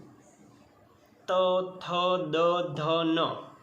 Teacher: हमारी जिह्वा दांत के पिछले हिस्से में स्पर्श करती है, तभी हम इन वर्णों का उच्चारण कर पाते हैं। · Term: दंत्य